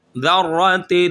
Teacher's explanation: زبان کی نوک اور دانتوں کا جو کنارہ ہے وہاں پر ٹچ کریں گے تو یہ ذال اور سا نکلیں گے، سیٹی کی آواز نہیں آنی چاہیے